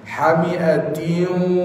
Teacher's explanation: masuk hidung. Kena tunggu dua harakat.